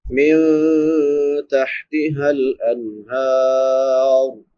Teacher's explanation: نون ساکن پہ اخفا ہوگا کیونکہ بعد میں حروف اخفا میں سے تا ہے